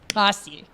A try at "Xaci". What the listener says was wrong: Well, no. Because you made it sound like the C sound. It's like with the X sound is Looks like it's more like the front of your tongue. You sound like you're saying Cassie.